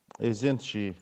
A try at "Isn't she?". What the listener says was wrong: Remember, when we say isn't she, again, our voice should go up, yeah? Like angry cookies, yeah? Angry voice. Isn't she?